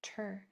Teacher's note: Pronounce it nice and clear, ter and not chur